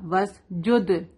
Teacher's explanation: لا تطیعوا واسجد، دال پہ قلقلہ ہوگا